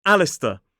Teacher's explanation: So the first syllable is that short /æ/ vowel sound. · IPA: /ˈælɪstə/